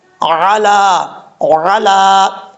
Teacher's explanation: حمزہ نہیں، حمزے کی آواز نہیں آنی چاہیے